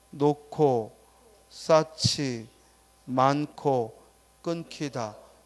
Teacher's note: 히읗 받침의 경우 그 뒤에 기역, 디귿, 비읍, 지읒 등이 오면 축약이 일어나서 발음되죠.